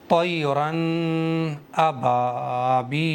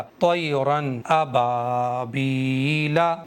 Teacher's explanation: दो ज़बर पर यहाँ नहीं रुकना है क्योंकि इजहार के अंदर जल्दी पढ़ना चाहिए नून साकिन को